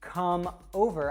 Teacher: if I say come over, I'd actually connect that M to the next word, so I'd say come over.